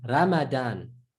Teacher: In English, the R is not pronounced full or heavy or deep